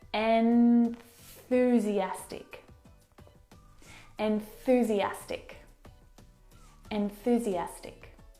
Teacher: And to move to the TH sound, you need to, of course, bring your tongue down and out through your teeth. And the tongue must come out through the middle of your teeth.